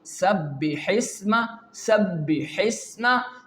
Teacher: With the Quranic example, if I can say sabbihisma, sabbihisma, you can see the scene is pronouncing and the scene is recited perfectly, softly and smoothly. There is no single blockage during the pronunciation of the letter scene.